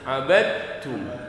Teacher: Jadi abadtum dibacanya abadtum. Dalnya hilang. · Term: idgham mutajannisain